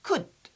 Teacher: we don't pronounce L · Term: silent